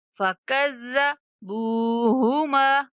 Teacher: با کے بعد واو مدہ ہے، با کو کھینچیں گے، اور میم کے بعد الف مدہ ہے تو میم کو بھی کھینچنا ہے۔